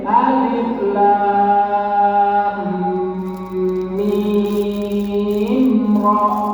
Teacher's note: mim masih ketemu dengan ra, hukumnya apa? Idhar syafawi, tidak berdengung.